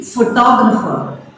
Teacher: So the stress is on the second syllable.